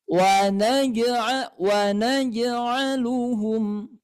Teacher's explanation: pantulannya tidak begitu jelas Kenapa karena huruf qalqalanya berada di tengah kalimah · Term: Qalqalah sugro